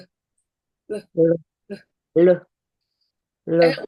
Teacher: 혀의 양 측면으로 공기가 흐르는 거래요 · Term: 설측성